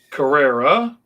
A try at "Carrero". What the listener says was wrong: Carrero. A lot of people, weirdly enough, confuse it with an A, like Carrera, because you have to say with like a Hispanic kind of a thing.